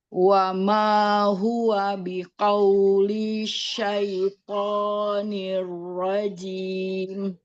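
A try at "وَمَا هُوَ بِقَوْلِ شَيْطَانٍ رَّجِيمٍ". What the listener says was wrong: Jangan dipanjangin linknya langsung biqauli syaito langsung ya.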